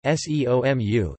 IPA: seomːu